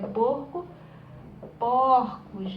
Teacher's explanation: é quando você tem uma vogal fechada no singular e ela abre, né, ela abre no plural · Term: plural metafônico